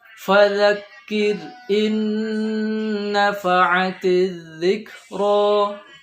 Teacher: Fadzakir, zal itu mengucapkannya ujung lidah bertemu dengan gigi seri. Za sifatnya lembut, jadi tidak perlu dihembuskan sehingga memunculkan hamas dan sebagainya.